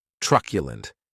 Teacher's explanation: Keep in mind that q is pronounced like you're saying the letter Q, trq lund. That last syllable has the schwa · this word has 3 syllables, and the stress is on that first syllable. Keep in mind that q is pronounced like you're saying the letter Q, trq lund.